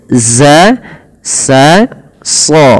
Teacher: menyamarkan nunnya kepada huruf Zal dan kepada makhraj daripada huruf Zai makhraj Zai itu sama sebagaimana Sin dan Shad ya Shad Sin Za itu sama lidahnya